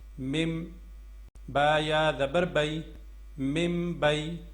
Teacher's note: تو یہاں پہ بھی ہم نے میم کی آواز نکالنی ہے، مم پڑھنا ہے، من نہیں پڑھنا